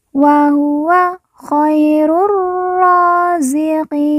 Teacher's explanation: perhatikan ru langsung masuk huruf ro alif lam tidak dibaca kemudian ro yang bertasdid kita baca ditekan dan ditahan dua harakat kemudian ro kita panjangkan lagi dua harakat karena di atasnya terdapat